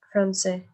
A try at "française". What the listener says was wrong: me pronunciaste lo mismo Jane en la nacionalidad que Serge, y son masculino y femenino, entonces tiene que haber una distinción.